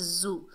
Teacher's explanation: तमय्या तमय्या, जा के ऊपर पेश बगैर खींचे पढ़ेंगे जू। जा जो है सख्ती और सीटी वाला हर्फ है, इसे सीटी से सख्ती से अदा करेंगे